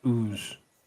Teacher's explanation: Drop the Y sound from the front of use, so it's instead of use, it's ooze.